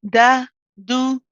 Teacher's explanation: you can still hear the lightness of the dal